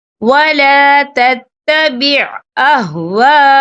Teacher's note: بِمَا أَنزَلَ اللَّهُ وَلَا تَتَّبِعْ أَهْوَاءَهُمْ، یہ دیکھیں وَلَا تَتَّبِعْ أَهْوَاءَ، یہاں خالف سے پہلے زبر ہے اور اس پر مد بھی ہے، یہ مد جو ہے مد متصل ہے، اس کی مقدار 4 عدد کے برابر ہے تو ہم اسے 4 عدد کے برابر کھینچ کے پڑھیں گے۔